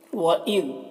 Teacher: ذال میں قلقلہ نہ ہونے پائے اس کا خیال رکھنا ہے اور ذال کو باریک پڑھنا ہے۔